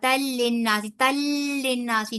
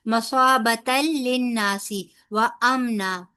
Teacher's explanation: دو زبر کی تنوین جا کے لام کے ساتھ ادغام ہو رہا ہے، تو یہاں ادغام بلا غنہ، بغیر غنے کے ادغام ہوگا۔ تل للناسی، تل للناسی نہیں کہنا، ٹھیک ہے۔